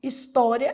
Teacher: História, essa daqui. Então, a penúltima sílaba é tônica. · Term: paroxítona